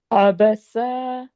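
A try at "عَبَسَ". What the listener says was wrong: सा सा सीटी, और खींचना नहीं है, सा लंबा नहीं करना है। सा, क्योंकि तीनों हरकत है, ठीक है।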